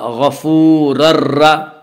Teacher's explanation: تنوین کے بعد را ہے اس لیے بغیر غنہ کے ملا کر پڑھیں گے۔ اسے ادغام بلا غنہ اور ادغام تام بھی کہا جاتا ہے۔